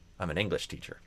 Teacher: I would do the opposite. Usually I would stress English more than teacher.